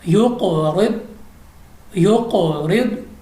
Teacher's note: اس کے بعد ہمارے پاس ہے یقرب، یقرب کیونکہ ہمارے پاس قاف کلکلا ہے اور را کے نیچے زیر ہے، اس لیے ہم نے را کو باریک پڑھا ہے